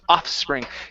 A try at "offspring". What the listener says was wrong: So you're skipping over the S sound, so it's offspring.